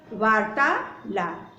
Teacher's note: जैसे वार्तालाप, अब देखिए ता भी बड़ा है, आ भी बड़ा है, अब दोनों मिल गए तो ये बड़ा ही बनेगा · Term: दीर्घ संधि